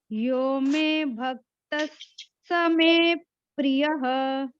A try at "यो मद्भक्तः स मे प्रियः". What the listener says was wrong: एक और सुनो, मद भक्तः, में नहीं है, यो में नहीं है, यो मद।